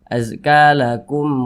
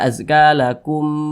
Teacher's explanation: dibaca jelas tidak berdengung pendek saja azakum waar jangan dibaca azakum jangan dipanjangkan seperti itu salah kemudian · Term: izhar syafawi